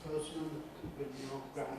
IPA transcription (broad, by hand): ˈpəʊsmən